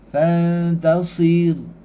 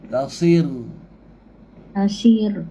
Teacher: Ra yang mati sebelum dia baris bawah. Fantasir. Nipis